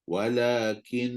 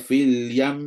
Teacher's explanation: Walakin, tak perlu nabr. Just panjangkan dengung saja untuk menunjukkan bahawa nun tu bersabdu.